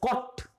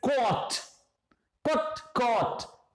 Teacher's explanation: The first word is pronounced as cot, again fast. Second is longer, it's caught. Caught. So small o and long o.